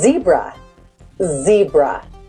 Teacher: vamos a hacer la S, pero ya no solo expulsando aire, sino usando las cuerdas vocales. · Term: sonido de la Z